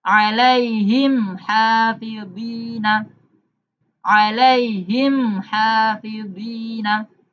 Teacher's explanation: Mimnya dibaca jelas. Tidak boleh didengungkan atau disamarkan. Karena termasuk idhar syafawi.